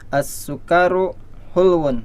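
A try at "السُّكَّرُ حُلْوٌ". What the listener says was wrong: As-sukkaru, ya, kafnya jangan dipanjangin.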